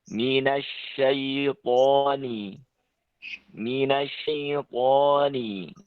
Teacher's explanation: menggunakan lidah bagian tengah dengan langit-langit yang lurus di atasnya. Minasya dengan diringi dengan angin yang sangat kuat. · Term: shin